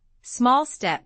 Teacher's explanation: Then small and step link with the L carrying into the S. Small step becomes SML step with a clear S at the beginning.